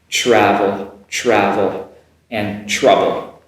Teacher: Now the TR at the front has the same pronunciation. It comes across as like a CHR